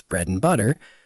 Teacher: and reduces to und or even just n